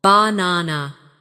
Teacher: in the word banana, the stress is on the second syllable, ba-na-na. If you put the stress in the wrong place, it can sound strange, even if your pronunciation of the letters is correct.